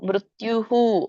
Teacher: ಮತ್ತೆ ಕೆಳಗಡೆ ಏನಿದೆ, ಯ ಒತ್ತಿದೆ, ತ್ಯೂ ಆಯ್ತು. ಸೊ ಹಾಗಾಗಿ ಮುಂದೆ ವಿಸರ್ಗ ಇದೆ. ಹಾಗಾಗಿ ಅದಕ್ಕೆ ತ್ಯುಹು ಅಂತ ಹೇಳ್ಬೇಕು